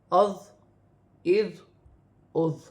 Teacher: ذا نرمی والا حرف ہے، نرمی سے ادا کیا جائے، سیٹی نہ ہو۔